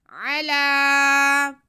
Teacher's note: عین پہ زبر اور لام پہ کھڑا زبر ہے، ان کو نہیں کھینچنا، لام کو ہم ایک الف کے برابر کھینچیں گے